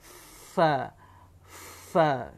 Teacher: Yang ke-15 tadi ada 1 huruf, iaitu fa. Dia bukan bibir atas jumpa bibir bawah, tetapi gigi kacip atas itu kasih kena dengan bibir bawah. Dia tidak sampai bibir betul-betul dua bibir ni. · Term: huruf fa